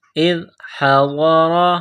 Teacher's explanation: ام کنتم شہداء اذ حضر، حمزہ کو ذال کے ساتھ پلس کرنا ہے، ذال کو پڑھتے وقت زبان تھوڑی سی باہر نکالیں گے